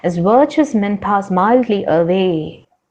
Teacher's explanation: foot of poetry follows a pattern of unstressed syllable followed by stressed syllable unstressed stressed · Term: iambic tetrameter